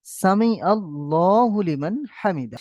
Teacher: এই লাম মুসাদ্দাদের আগে অক্ষরে যদি জাবার অথবা পেশ হয়, তাহলে ল করে পড়বো।